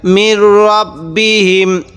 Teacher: অনেকেই আমরা যেই ভুলটা করি এখানে আমরা মির রাব বি হিম এরকম করে পড়ি। দেখুন এটা কিন্তু র জবর র হয়, র জবর রা হয় না।